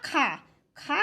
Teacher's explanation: वायु बहुत अधिक मात्रा में बाहर आती है उन्हें हम महाप्राण वर्ण कहते हैं